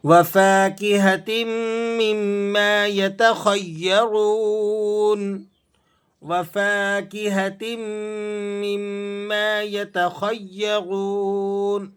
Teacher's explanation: را کو واو کے ساتھ ملانا ہے تو آپ نے کھینچنا بھی ہے اور را کو موٹا بھی پڑھنا ہے